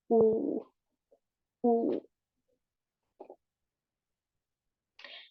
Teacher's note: la vocal u cerrada posterior no eso está es su clasificación es una vocal cerrada posterior redondeada porque cuando la la pronunciamos los labios lo vamos a formar van a estar redondeados